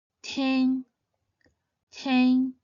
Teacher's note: It should be pronounced in the 1st tone